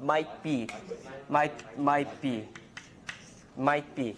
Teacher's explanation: if you say might you don't release it